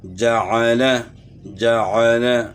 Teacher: عین کی آواز کو گلے کے درمیان سے ادا کرنا ہے، وسط حلق سے، یعنی جعل نہیں پڑھنا، جعل، جعل۔